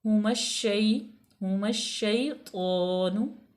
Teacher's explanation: हुमश्शैतानु, ठीक है, अलिफ लाम लाम तारीफ़, उसके बाद शीन है, तो अलिफ लाम को हम साइलेंट करेंगे, शीन मुशद्दद है